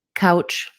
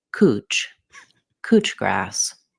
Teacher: Couch, like the couch we sit on. In Australia, they pronounce this cooch grass. Instead of ow, they use oo, cooch.